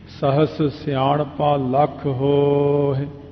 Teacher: ਹੋ ਲੰਮਾ ਕਰ ਲਓ, ਹਾਏ ਦੀ ਸਿਹਾਰੀ ਆਪਣੇ ਆਪ ਹੀ ਬੋਲ ਜਾਂਦੀ ਹੈ, ਉਹਨੂੰ ਕਹਿਣ ਦੀ ਲੋੜ ਨਹੀਂ ਪੈਂਦੀ।